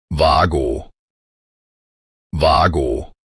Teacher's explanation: the initial letter W is pronounced with a V sound. And both vowels are drawn out long and clear.